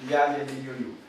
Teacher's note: la sibilante posalveolar sonora con aire pulmonar agresivo